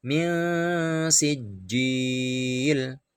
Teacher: ketika kita membunyikan huruf nun mati sudah mengira-ngirakan bunyi sin. Jadi min sijil samar, ada dengungnya 2 ketuk. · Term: ikhfa